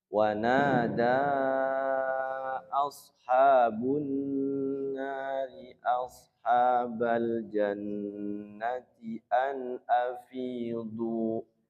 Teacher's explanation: Jadi wanada naknya panjang, daknya panjang. Naknya 2 harokat, daknya 6 harokat.